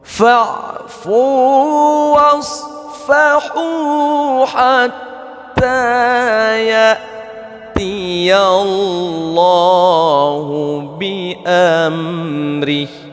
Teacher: di sini kita banyak menjumpai mad asli ataupun mad tabi'i yang panjangnya 2 harakat